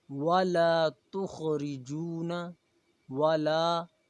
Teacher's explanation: ولا لام کے اوپر الف مدہ ہے، ایک الف کے برابر کھینچیں گے۔